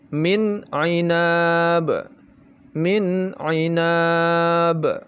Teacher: Min dibaca jelas, kemudian a-nya juga jelas, ainab. Tidak boleh didengungkan, misalnya min ainab, atau terlalu cepat, min ainab, min ainab. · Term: izhar